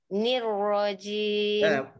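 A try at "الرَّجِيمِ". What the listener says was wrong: Jangan naik di hidung. Nirrajim tak. Nirrajim. Tak ni bila letak lidah tu.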